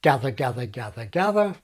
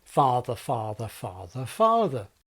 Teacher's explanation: the stressed vowel of gather is short while the stressed vowel of father is long